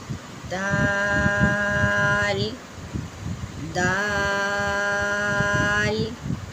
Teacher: دا بھی جو سامنے والے دانت ہے اس کے جو پیچھے میں سوڑے ہیں اس پہ زبان لگتی ہے، اس کو تھوڑا سا کھینچ کے پڑھیں گے۔ دال دال اس طرح کر کے، دال ایسے نہیں کرنا، دا کو لمبا کرنا ہے، لام کو لمبا نہیں کرنا ہے۔